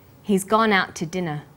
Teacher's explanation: we stress he's gone out and dinner the two is unstressed when we link out which is stressed